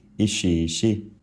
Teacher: In that word, in the middle syllable, there are two i sounds in a row which comes out as just a lengthened e